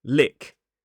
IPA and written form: lɪk (lick)